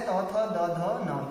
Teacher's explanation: त थ द ध न, ये आपके दंत्य व्यंजन है